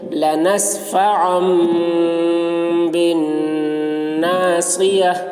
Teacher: تنوین کے بعد با آ رہا ہے، اس لیے تنوین کو میم سے بدل کر غنہ اور اخفا کے ساتھ پڑھیں گے، اس کو اقلاب کہتے ہیں۔